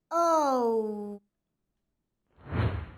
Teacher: O is a two-faced sound. We make it by moving our mouth from an O shape to an U shape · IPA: /əʊ/